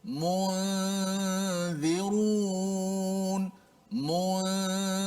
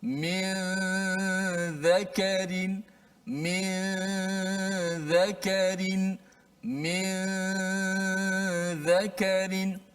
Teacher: Zal hujung lidah di bawah gigi atas. · Nun hanya kita kekalkan pada gunnah di hidung saja. Sebut mu, mulut kita terus pergi, lidah kita pergi huruf zal tanpa menekan-nekan huruf zal. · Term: ikhfa hakiki